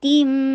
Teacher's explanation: اور میم کے ساتھ ملانا، نہیں تم نہیں ہوگا، تی بولیے، تی کو بول کے اور پھر میم کے ساتھ ملا کر 2 حرکہ غنہ کیجیے ، تیم، اور پھر آگے پھر اکمل غنہ آ رہا ہے،